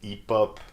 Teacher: So you just read it like there is no H at all